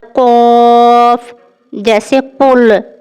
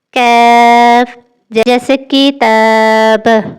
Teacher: قاف میں زبان اوپر کی طرف زیادہ اٹھتی ہے، جبکہ کیف تھوڑی نیچے سے ادا ہوتا ہے۔